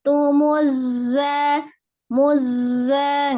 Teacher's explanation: zainya itu kan mengalir tidak boleh terpisah tasdidnya